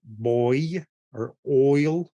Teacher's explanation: then there's a oi as in boy or oil right it's like a very open o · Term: the oi